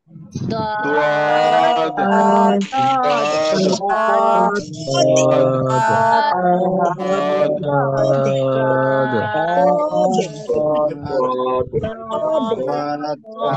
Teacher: খেয়াল করতে হবে কিন্তু, জিহ্বার গোড়ার কিনারা না, জিহ্বার গোড়ার কিনারা, সেটা বাম পাশ হতে পারে ডান পাশ হতে পারে। জিহ্বার গোড়ার কিনারা উপরে মাড়ির দাঁতের গোড়ার সঙ্গে লাগাবেন, লাগিয়ে উচ্চারণ করতে হবে।